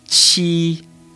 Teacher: But you do not use your vocal cords like with the letter J.